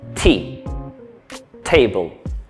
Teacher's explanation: suena un poco más fuerte, un poco más intenso, con un poco más de aire, así como suena un poco más en inglés.